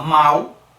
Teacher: A gente fala mal, tem o U no final. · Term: fonema U